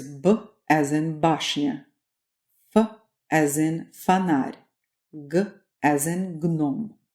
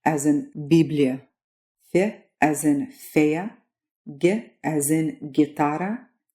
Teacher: these are hard non palatalized consonants that Russian and English share and then we'll introduce you to some of the soft or palatalized versions of these same consonants